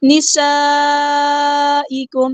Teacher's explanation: الا نسائکم، حمزہ کی آواز واضح ادا کرنی ہے، الا حرکات مد آئیے، ٹو کاؤنٹس لمبا کریں گے، نسائکم، سین سٹی واضح کرنی ہے، مد دکھ رہی ہے، کنیکٹڈ مد ہے، 4 یا 5 کاؤنٹ ہم نے اس کو لمبا کرنا ہے، حمزہ کی آواز واضح ادا کرنی ہے، کاف باریک لائٹ لیٹر ہے۔